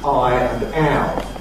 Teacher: In Estuary English, it certainly goes all the way and you’ve got something like [ɑɪ] and [æʊ].